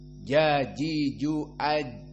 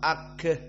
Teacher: Jim ini sifatnya jahr jika disukunkan tidak boleh keluar udara